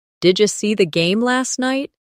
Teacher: Did you becomes didya.